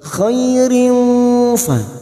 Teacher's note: khai fathah bertemu ya sukun kita lunakkan